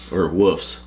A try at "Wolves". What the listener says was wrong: Dances with Wolves has a V in it.